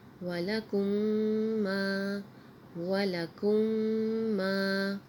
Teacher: اگلا لفظ ہے وَلَكُمْ مَا، وَلَكُمْ مَا، میم یعنی الف خالی سے پہلے زبر ہے تو یہ الف مدہ ہے، اس کو ایک الف کے برابر کھینچ کے بھی پڑھیں گے۔ میم میم کو جب ملائیں گے تو یہاں غنہ ہوگا۔